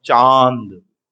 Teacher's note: बोले नाक से हवा ज्यादा मुंह से कम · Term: अनुनासिकता